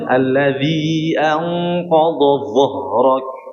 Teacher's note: Sebenarnya sama seperti mengucapkan dza, tapi ditebalkan.